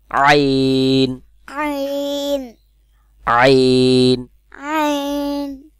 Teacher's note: আইনের আ গলার মধ্যখান থেকে উচ্চারণ হবে